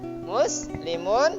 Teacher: Jadi ini mat aridi sukun. Panjangnya kurang lebih 3 alif. Ada juga yang mengatakan 4 alif.